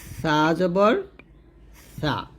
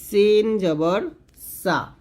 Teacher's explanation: জিহ্বার আগারটা উপরে দাঁতে লাগবে